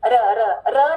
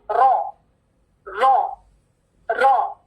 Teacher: मोटा आर ये डब्ल्यू वाली साउंड और इसमें वाइब्रेशन